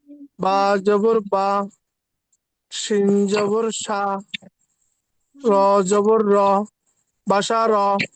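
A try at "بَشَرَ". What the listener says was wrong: একসাথে হয়ে গেছে, কিন্তু আমি কিন্তু ভেঙে ভেঙে উচ্চারণ করেছিলাম।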